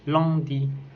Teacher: C'est une voyelle antérieure et mi-ouverte, arrondie et nasale.